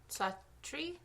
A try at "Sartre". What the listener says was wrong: No, there's no R. It's S-A-T-R. Yeah, but you're saying Sar, like putting the R before the T.